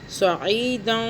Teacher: زبان کو تالو سے ٹچ کیے بغیر ناک میں غنہ کر لیں گے ، زبان کو درمیان میں رکھ لیں گے، سعیداً، زا زبر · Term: اخفاء